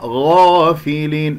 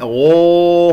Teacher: الغين مفتوحة بعدها ألف مفخمة مرتبة أولى